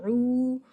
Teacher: عو کو جو آواز ملتی ہے حمزہ کی آواز سے، لیکن درمیانی حلق سے پڑھیں عو، اور 2 سیکنڈ لمبا کریں یا کچھ کھینچ کر پڑھیں، تھوڑا سا اسٹریچ کر کے پڑھیں عو.